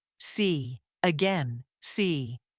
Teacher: This sound is very common, and many learners pronounce it correctly, but they pronounce it too quickly. American English stretches this vowel slightly, giving it a smoother and clearer quality. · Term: long E sound